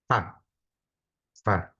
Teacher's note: cara mengucapkan huruf fa, gigi atas ketemu bibir bawah, bagian dalam